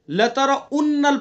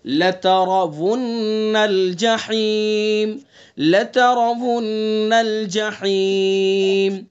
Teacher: لترون را کو پر پڑھیں گے اور آگے واو کو صاف پڑھیں گے.